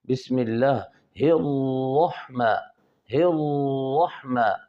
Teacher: اس کی را مشدد ہے اور اس کو خوب تفخیم کے ساتھ پڑھنا ہے